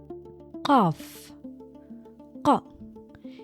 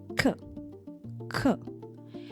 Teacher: ق starts in the same general area, but pushes farther back along the soft palate towards the uvula, the small fleshy piece hanging at the very back of your mouth.